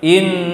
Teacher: ketika menahan nun tasydid itu enggak terhalang di hidung terlalu dominan